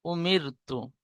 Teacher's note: র সাকিনের ডানদিকে জের এসেছে তাই র কে বারিক করে পড়ব